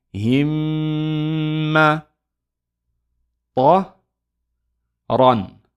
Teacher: What we're going to do, we're going to hold it for 2 counts. We're going to pronounce ghunna, which is the nasal sound, and then release.